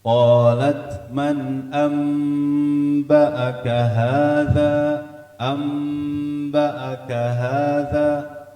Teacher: Nunnya berubah menjadi mim disertai dengan dengung, ditahan dua ketukan. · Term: Iqlab